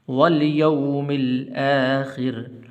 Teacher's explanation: را کے نیچے زیر ہے، اس کو بھی باریک کرنا ہے